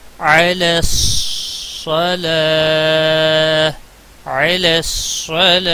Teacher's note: عین کا خاص خیال رکھنا ہے، وسط حلق والا ہے